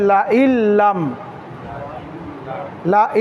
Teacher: নুন সাকিন বা তানবিনের পরে যদি র অথবা লাম হয় তাহলে নুন সাকিন বা তানবিন কে গুন্না ছাড়া মিলাইয়া পড়তে হয় তাহলে লা ইন কে পড়তে হবে লা ইল্লাম লা ইল্লাম ইল্লাম